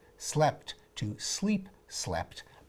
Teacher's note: But when you add an extra little bit to the end of a verb, like that T at the end of sleep, you tend to shorten the vowel to compensate so the word will fit into the metronome of speech. A long E becomes a short E, and then because of other changes, the sound A turned into the sound E, and you go from slept to sleep, slept.